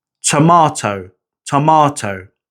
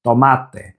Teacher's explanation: You'll feel those little bursts of air on the T sounds. It's not quite as much as the P sound, but you can definitely feel it.